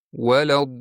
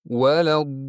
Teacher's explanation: Bunda lam ortiqcha ushlanmasdan faqat ikkilantiriladi xolos.